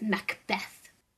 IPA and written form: məkˈbɛθ (Macbeth)